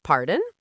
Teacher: You need to use a rising intonation.